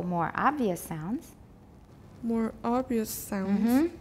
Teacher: more obvious has contrastive stress